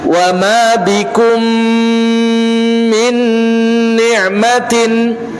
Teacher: ketika kita mendapati mim bertasydid, jelas hukumnya adalah gunnah tingkatan pertama